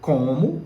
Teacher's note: O acento tônico, ou seja, o som mais forte de como, recai sobre a primeira sílaba, tá certo? A tônica está aqui, com.